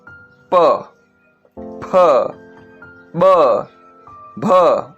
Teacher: प बोलोगे, आपके दोनों होठ स्पर्श होंगे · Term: ओष्ठ्य व्यंजन